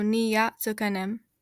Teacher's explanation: n kind of turns into ni because of the Y